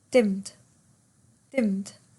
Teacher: The ed is almost kind of silent or half said, right? It just becomes one word.